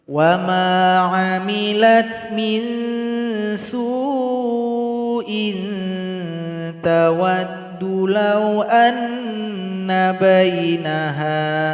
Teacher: didengungkan nanti karena ada tanwin berjumpa huruf ta.